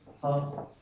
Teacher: जो हमारा उष्म वर्ण होता है ह, तो उसका उच्चारण स्थान भी क्या होता है? कंठ।